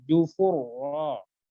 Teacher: Ta bertemu ro, berarti harus ditebalkan ro-nya taru. Jufu, fu-nya tipis, ro-nya tebal.